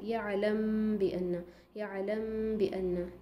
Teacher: गुन्ना की आवाज़ तो नाक में से आती है, इसीलिए इसको कहा गया इख्फ़ा, यानी कि आप मीम के मखरज से आवाज़ नहीं निकाल रहे हैं बल्कि बा के मखरज से निकाल रहे हैं · मीम साकिन के बाद बा आए तो मीम की आवाज़ को बा में छुपा कर पढ़ेंगे। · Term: इख्फ़ाए शफ़वी